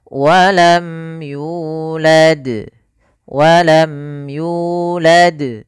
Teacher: itu mimnya dibaca dengan jelas tanpa ditahan ya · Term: izhar syafawi, idhar syafawi